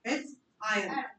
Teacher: आर पे stress डालना ही नहीं है